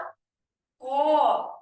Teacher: দেখো আমরা যখন ক উচ্চারণ করছি, এই ক এর সাথে একটা অ আসছে। দেখো, ক কিন্তু অকে ছাড়া একা উচ্চারিত হতে পারছে না।